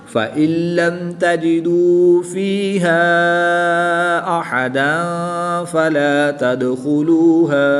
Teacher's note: دو زبر کی تنوین کے بعد حروف اخفا میں سے فا ہے تو یہاں پر اخفا ہوگا یعنی غنہ زمانی کر کے پڑھیں گے